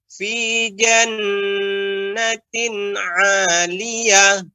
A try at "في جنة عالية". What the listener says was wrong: Untuk hanya lebih ditampakkan lagi bagian ujungnya ya, fi jannatin 'aliyah. 'Aliyah.